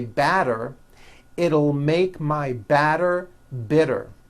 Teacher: you do not hear any T sounds TT they're only D's d d which are voiced